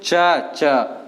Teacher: और च वर्ग का होता है तालु